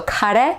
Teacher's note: keep it pure do not add an e at the end and turn it into a diphthong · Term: pure e